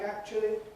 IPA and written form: ˈækʧli (actually)